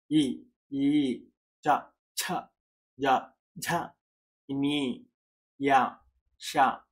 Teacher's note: తాలువులో పుట్టాయి కాబట్టి అవి తాలవ్యాలు